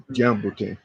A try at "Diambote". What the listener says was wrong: Diambote is not Kiambote. It's Diambote,